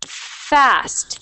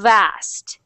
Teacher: if you push air and sound then it becomes V